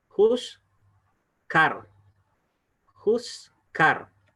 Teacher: cuando el shba va en medio de dos vocales, en este caso va en medio de una pataj y una U, en este caso, el shba que está debajo de la zain, no suena vocal